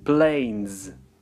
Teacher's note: последний звук звонкий, n. Значит, нам произнести нужно звук z.